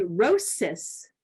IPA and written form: roʊ.sɪs (rosis)